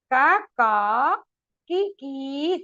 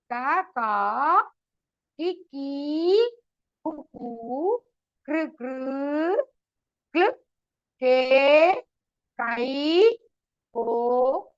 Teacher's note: Ka, ka, ki, ki. See, I am not changing the Mahaprana at all. It's an Alpa Prana. I am taking the Gunita Akshara with only Alpa Prana now.